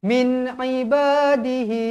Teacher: Nun sukun, nun mati bertemu huruf ain. Izhar halqi. Jelaskan dia.